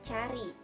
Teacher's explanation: Ciri-cirinya rendah, tak bulat, depan.